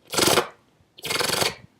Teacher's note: my bottom lip is touching my top lip repeatedly, very fast as I'm sucking air in